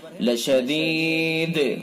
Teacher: را کو پر پڑھیں گے چونکہ را کے اوپر زبر ہے، لشدید وقف کی وجہ سے دال کے اندر قلقلہ ہوگا